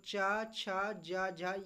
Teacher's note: च छ ज झ ये हमारे क्या हो जाएंगे स्पर्श संघर्षी व्यंजन